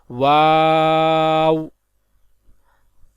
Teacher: دونوں ہونٹوں کی گولائی سے ادا ہوتا ہے